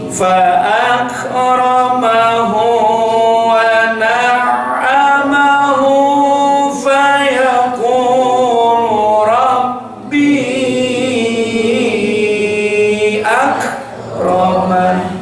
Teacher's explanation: Mad jaiz munfasil itu bunyi panjangnya boleh 2 sampai 6.